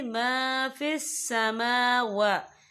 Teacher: یہاں دونوں جگہوں پہ کھڑی حرکات ہے تو ہم یہاں 2 یا 3 عدد کے برابر کھینچ کے پڑھیں گے